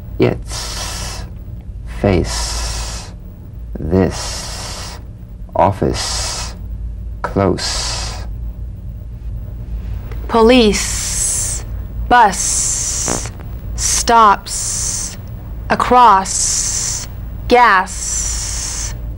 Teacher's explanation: so it's the same tongue placement as the Z the Z the S is like a gentle escape of steam play it softly and smoothly and feel a steady sharp sensation too soft to be a whistle · to the Z unvoiced s sound fricative tongue to gum Ridge the S is like the Z except it's unvoiced so it's the same tongue placement as the Z the Z the S is like a gentle escape of steam